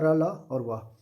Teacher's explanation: हिंदी वर्णमाला में अंतस्थ व्यंजन उन व्यंजनों को कहा जाता है जिनका उच्चारण करते समय जीभ मुख के किसी भी भाग को पूरी तरह स्पर्श नहीं करती और हवा का प्रभाव लगभग बाधित नहीं होता, जिससे ध्वनि अर्धस्वर जैसा प्रतीत होता है।